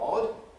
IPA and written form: ɒd (odd)